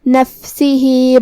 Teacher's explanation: آخری میں ہا کے نیچے کھڑی زیر ہے. یہاں حکم ہے مد صلہ صغرا. ہم اپنی آواز 2 مد کے برابر لمبی کریں گے